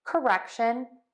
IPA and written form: kəˈrɛkʃən (CORRECTION)